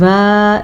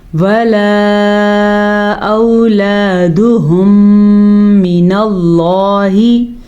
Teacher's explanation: مد کو کھینچ کے پڑھیے گا، تقریباً یہ والی مد 2.5 سیکنڈ تک لمبی کی جاتی ہے